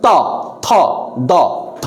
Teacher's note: আপনার জিহ্বাটা সবসময় দাঁতের সাথে স্পর্শ করছে, দন্ত মানে দাঁত, দাঁতের সাথে স্পর্শ করছে, ফলে এটিকে আমরা বলবো দন্তধ্বনি।